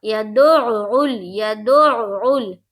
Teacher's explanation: یہاں پر دیکھیے بالکل کلیئر آواز نکالنی ہے، عین جو ہے وہ حذف نہیں کرنا ہے، بالکل کلیئر نکالنا ہے۔ عین کو 2 مرتبہ پڑھیں گے، ایک بار دال سے ملا کر پڑھیں گے، دال کو عین میں ملائیں گے، پھر عین کو لام میں ملائیں گے، گویا عین کو 2 مرتبہ پڑھیں گے، تو دونوں بار کلیئر آواز نکلنی چاہیے اور سمجھ میں آنی چاہیے کہ ہم وہاں پر حرف عین پڑھ رہے ہیں۔